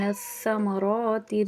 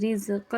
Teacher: را کو یہاں پر پر پڑھیں گے ثمراتی میں، رزقن میں باریک پڑھیں گے